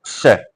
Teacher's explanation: इसके बाद में है श, इसका उच्चारण स्थान होता है तालु से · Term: तालव्य श